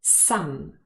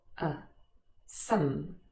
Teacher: the full form and the vowel sound is ah some however usually this word is not stressed and it occurs in its weak form with a schwa uh some so if it's stressed some and if it is